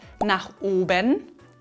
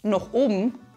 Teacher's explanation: Das A in nach wird zu einem O. Wir nennen das auch Verdumpfung.